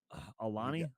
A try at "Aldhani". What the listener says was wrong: Aldhani. You were close. You forgot the D.